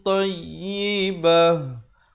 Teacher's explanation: Kalau waqaf, ta marbutah ataupun ta simpul, dia ditukarkan kepada ha besar, ya.